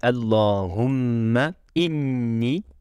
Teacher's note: Elle sort de la cloison nasale et se traduit par des vibrations du nez. On ressent cette vibration quand on prononce les deux lettres mim et nun, M et N. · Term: la nasalisation